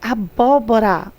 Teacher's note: acentuada na terceira sílaba, na antepenúltima